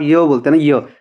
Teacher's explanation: य का उच्चारण स्थान है तालु।